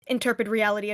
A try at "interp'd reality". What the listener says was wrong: Bear in mind that bear in mind that it's pronounced interp'd reality. There is no e.